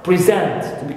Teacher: instead of stressing the first syllable in present, I stress the second syllable in present